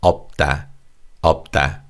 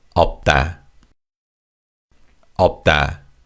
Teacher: The first syllable up has a 겹받침 of 비읍 and 시옷. And 시옷 is silent when you say this word.